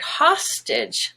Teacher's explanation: if you take the word hostage the stress is on ha stitch which then makes the a no longer gray but just schwa